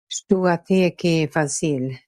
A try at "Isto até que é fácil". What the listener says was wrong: The queen is also off in fácil, but there's more. It seems you kept the tip of your tongue, the top of your mouth for too long on the L. I think the dark L only exists in some dialect in Sweden, but it might still be good to check out my light and dark L video.